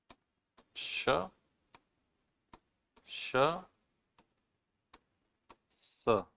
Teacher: इनको बोलते समय वाइब्रेशन नहीं होता है वोकल कॉर्ड्स में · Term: अघोष